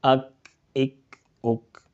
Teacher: जुबान की जड़ और तालू के सख्त हिस्से से अदा होता है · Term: काफ